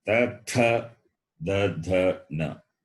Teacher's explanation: where the tongue touch above the base, above at the base of the upper teeth. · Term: dentals